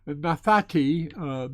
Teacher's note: Notice that the second nun has assimilated because it has a schwa beneath it, and so it's assimilated into the tau that follows.